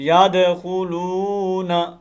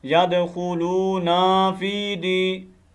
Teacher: نون کو لمبا نہیں کرنا، ٹھیک ہے، یہ حرکت ہے، حرکت لمبی نہیں ہوتی